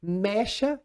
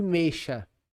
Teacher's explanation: O que é que diferencia uma palavra do outro? O E aberto e o E fechado.